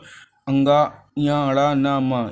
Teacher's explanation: और इनका उच्चारण स्थान नासिका होता है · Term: पंचाक्षर